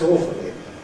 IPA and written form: ˈɔːfəli (awfully)